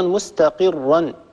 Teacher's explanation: الراء مفخمة، لا نترك الكسرة التي سبقت الراء تؤثر على الراء المفتوحة بعدها